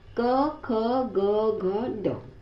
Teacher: पहला है क वर्ग। यहाँ रुकावट गले के पास यानी कंठ में होती है, गले के पीछे होते हैं।